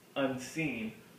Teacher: unseen with the first syllable being unstressed and the second syllable getting emphasis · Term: I am